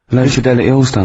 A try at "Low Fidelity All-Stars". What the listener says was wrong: No, it's just you didn't know your mouth wide enough.